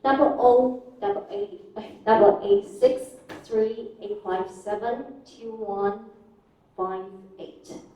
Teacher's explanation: you have rising intonation for each group, except the falling intonation at the end.